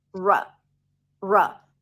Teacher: The second syllable is quick and short. It's an R sound and a schwa.